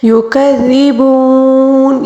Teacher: یہاں پر پھر واو مدہ ہے، اس کو 3 الف کے برابر اس لیے کھینچیں گے کیونکہ یہ وقف کے آخر میں آیا ہے